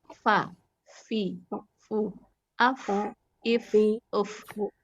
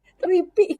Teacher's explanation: Sedangkan kita harus keluar hamesnya, harus keluar nafasnya, harus ada alirannya. Dia sifatnya dari sifat rokhwah, ada sifat hamesnya. Jadi ada aliran, ada nafas.